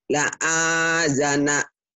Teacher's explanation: a-nya panjang, la-nya pendek.